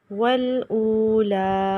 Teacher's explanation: او کو ہم لمبا کریں واو ساکن کی وجہ سے واو مدہ